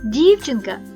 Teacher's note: в слові дівчинка перший звук дь м'який